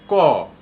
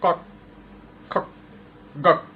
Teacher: ক এর সাথে আর একটা অ উচ্চারণ করি। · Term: ব্যঞ্জন ধ্বনি